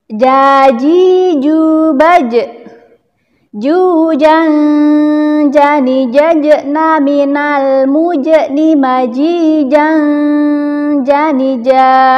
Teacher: huruf jim ini keluarnya dari tengah lidah kita, ditempelkan ke langit-langit atas mulut kita. Nah, rongga ditempelkan ke langit-langit.